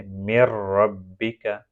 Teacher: نون سکون کو را میں داخل کیا گیا لیکن اس کو ناک سے نہیں پروناؤنس کیا جائے گا، بغیر غنہ کے پڑھا جائے گا